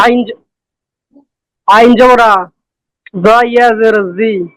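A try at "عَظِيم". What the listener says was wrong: জটা একটু নরম হবে। আইন জবর আ, জ ইয়া জের জি, জ।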